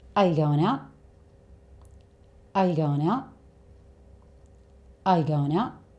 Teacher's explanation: It's like you're about to say it, but then you stop yourself just before you make the 't' sound. "Uh yuh goinou'?" Now, you don't have to speak like him.